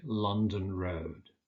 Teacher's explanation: with roads, you tend to stress the second element